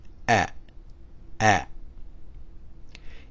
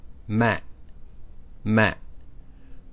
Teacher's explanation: the pronunciation is like the letter A in the word mat but with a glottal stop so it sounds like at at its romanized form on the